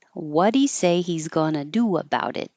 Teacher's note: getting rid of the H in a pronoun you can do that with he him his her and them